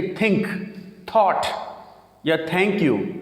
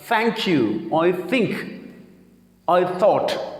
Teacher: ज़बान की नोक को ऊपर वाले दांतों से थोड़ा सा अलहदा करके उसके बीच में आवाज़